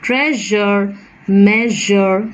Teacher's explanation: Treasure, measure, the je there. And it is a voiced post-alveolar fricative